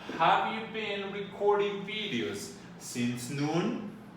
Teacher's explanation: for a yes no question, it goes up like if you were singing